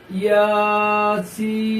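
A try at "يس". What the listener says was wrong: মাশাআল্লাহ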